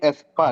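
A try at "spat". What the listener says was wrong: ক্যান্সেল। স্প্যাট, স্পাট না বলে স্প্যাট।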